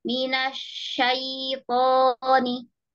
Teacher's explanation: Kalau minasa, ujung lidahnya diam di bawah. Coba diangkat di tengah-tengah ya. Gak boleh nempel ke atas atau ke bawah.